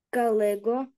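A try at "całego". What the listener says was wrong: Цалего. Цалего. Так, по-польськи то літерка «ц» перша, так? Цалего.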